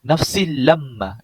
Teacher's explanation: Dekat situ tak boleh dengung, maka kita baca dengan cara bacaan ialah nafsil lamma. Kita tak perlu dengung, tak ada harakat. Kita tak boleh dengung. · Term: idgham bilal gunnah